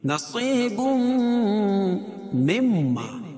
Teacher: میم کا میم میں ادغام ہو گیا تو یہاں مم ما ہو گیا، تو یہاں غنہ ہوگا، میم مشدد ہے غنہ ہوگا، پہلے میں بھی غنہ ہوتا اور دوسرے میں بھی غنہ ہے، لیکن قاعدہ کے حساب سے دونوں الگ الگ ہے۔